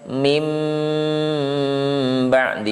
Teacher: suara nun sukunnya dibalikkan ke suara mim untuk mengucapkan awal dari huruf ba ini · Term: iqlab